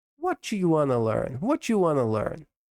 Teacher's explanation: Want to acaba virando wanna.